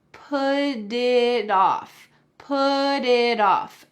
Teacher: both T's are going to change to D's because they are surrounded by vowels · the T at the end of put is going to change into a D sound in American English